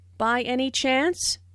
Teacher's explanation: Notice the rising intonation, which is used in yes/no questions to confirm that something is true.